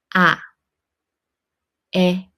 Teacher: Open your mouth wide It is a combination of a and i Make the a sound first, then add i